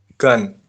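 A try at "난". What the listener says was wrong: Kok gan sih? Huruf pertamanya apa? Nien. Huruf pertamanya nien. samping ini huruf apa? Vokal apa? Vokal A ya. Jadi nien tambah dengan vokal A dibaca na. Terus giok di akhir dibaca.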